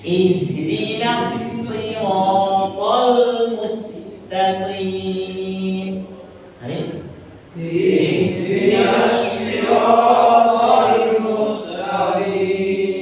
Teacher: Ingat, ha itu makhrajul hurufnya di mana? Ha. Di tenggorokan yang di bawah.